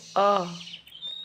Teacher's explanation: जीभ के बीच का हिस्सा उठ रहा है तो ये मध्य या केंद्रीय स्वर होता है